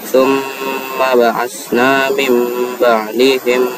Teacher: Ketika huruf nun sukun bertemu dengan huruf ba, maka harus kita bacakan saja sama seperti huruf mim. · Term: iqlab